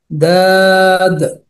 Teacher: 7 নম্বর মাখরাজ, জিহ্বার গোড়ার কিনারা সামনের উপরের এক পাশের দাঁতের গোড়ার সঙ্গে লাগিয়ে